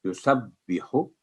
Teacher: ہا کے اوپر دمہ ہے نا، تو ایک سیکنڈ، یسبح یعنی آواز لمبی نہیں ہونی دینی